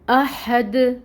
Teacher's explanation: تو یہ حمزہ اور پھر ہا، ہمس لائیں، اس میں سانس باہر نکلے گا جو آواز آتی ہے، اور پھر 1 کاؤنٹ حرکت پڑھیں گے، اور دال ساکن ہوگا، دال کو ساکن کریں گے اور یہاں پہ قلقلہ ہوگا · ہمس لائیں، اس میں سانس باہر نکلے گا جو آواز آتی ہے، اور پھر 1 کاؤنٹ حرکت پڑھیں گے، اور دال ساکن ہوگا، دال کو ساکن کریں گے اور یہاں پہ قلقلہ ہوگا، ٹھیک ہو گیا۔